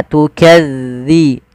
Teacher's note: tipis dalalnya tidak ada desis